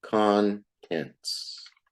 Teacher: You put the most stress on the first syllable.